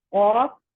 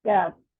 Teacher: آف کو پور کریں گے, کیف کو باریک پڑھیں گے